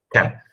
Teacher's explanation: Sem o corpo da língua na região velar, como vocês estão vendo aí na imagem, eu não posso fazer o K. Eu preciso tocar o corpo da língua no palato